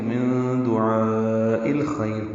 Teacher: دعاء یہ الف مدہ کے بعد حمزہ آنے کی وجہ سے مد متصل ہے. حمزہ کو الخیر کے لام سے ملا دیں گے · من دعا میں نون ساکن کے بعد دال آنے کی وجہ سے اخفا ہے، نون کی آواز کو چھپائیں گے. دعاء یہ الف مدہ کے بعد حمزہ آنے کی وجہ سے مد متصل ہے.